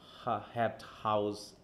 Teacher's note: এটা হচ্ছে কি ভয়েসলেস গ্লোটাল ফ্রিকেটিভ